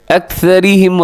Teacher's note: أكثرهم را کے نیچے زیر ہے تو را باریک پڑی جائے گی